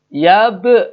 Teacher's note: kolkolah sugro, karena di tengah kata, terus baknya sudah mati